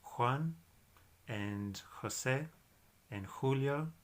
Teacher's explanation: soft G that I mentioned a moment ago where it's like a haitch sound that comes from the back of your throat